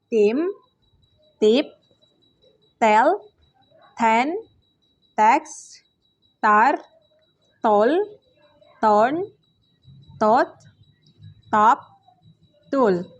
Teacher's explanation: voiceless alveolar stop sound t